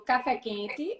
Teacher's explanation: Mas se eu digo café quente, a sílaba tônica é quente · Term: acento frasal